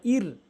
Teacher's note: র সাকিন র সাকিন এটি র তার উপরে সাকিন এই ডানদিকে যদি জবর আর পেশ দেখেন এই র সাকিনকে আর বলা যাবে না আর র মুখ গোলকার করে বলতে হবে আর র সাকিন ডানদিকে যদি জে দেখেন তখন এ র সাকিন বারিক হয় হালকা হয় মুখ অসার হয়